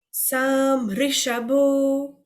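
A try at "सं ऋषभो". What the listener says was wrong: Good. Now, very good. Hold on to that and just make Sam Rishabho.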